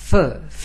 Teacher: गले की जो वोकल कॉर्ड है वह वाइब्रेट नहीं करते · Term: अन वॉइस साउंड